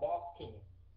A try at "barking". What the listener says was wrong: Không phải parking mà là barking, nhẹ nhàng thôi chữ B đó, barking. Đừng có bẩm môi nha, đừng có bẩm môi chặt, không phải là parking mà là barking. Bark đó, barking.